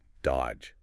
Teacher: You don't say that middle D at all. It's just dodge.